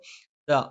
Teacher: ദ നാവിന്റെ അറ്റം മേലെ മുൻബല്ലിന്റെ മുരട്ടിലാണ്